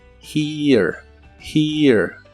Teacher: La H se pronuncia como una J suave y lleva un sonido de I larga. Además suena como un ligero sonido de E antes de pronunciar la R.